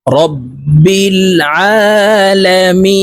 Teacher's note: রব্বিল আলামিন মি এখানে তিন আলিফ টেনে নুনকে করতে হবে কারণ মদের হরফের বামের হরফে ওয়াকফ হইলে মধ্যে আরজি তিন আলিফটা নিয়ে পড়িতে হয়